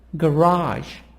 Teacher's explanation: So here, stress on part number 2. The sound is higher on the second part, on the second syllable.